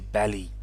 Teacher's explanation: Colombians, V sound, they'll often pronounce it as B. So instead of a valley, they might say belly.